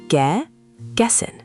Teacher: Two beats. The stress lands on the gess part, not the little ge at the start.